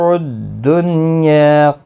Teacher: دنیا نون ساکن کو ظاہر کر کے یہاں پر پڑھیں گے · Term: اظہار مطلق